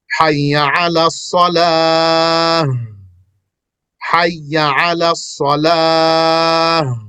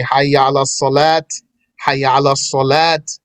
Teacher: When you say salah, there's a ha. You could say with a ta, like some people do.